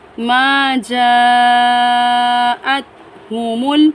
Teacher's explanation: یہاں پر بڑی مد ہے، اس مد کو ہم 4 سے 5 الف کے برابر کھینچ کر پڑھیں گے۔ حمزہ کو تا ساکن کے ساتھ ملائیں گے، چھوٹا ہا بھاری آواز میں پڑھا جائے گا، میم کو لام ساکن کے ساتھ میں ملا کر پڑھیں گے۔